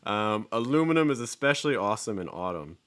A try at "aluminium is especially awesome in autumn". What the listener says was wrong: Okay, so aluminium is especially awesome in autumn. Awesome in autumn. So there you're hearing that same vowel sound, that or, which isn't so high. It's kind of middle, I think, compared with what you're doing.